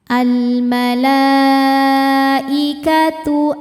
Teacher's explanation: Maka lamnya panjang, boleh 4 boleh 5 harokat. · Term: mad wajib muttasil